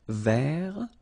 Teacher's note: so masculine form don't pronounce the final T ver feminine form ver so listen carefully I don't say t